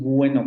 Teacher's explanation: decimos bueno casi con una consonante ahí en medio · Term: semi consonántico